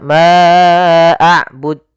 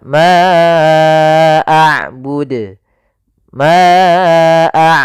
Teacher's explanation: huruf dal salah satu sifatnya adalah qalqalah, mantul